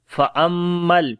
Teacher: میم کے اوپر شد ہے، غنہ کریں گے